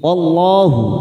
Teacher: Wallahu lam jalalah didahului fathah, kita baca tafkhim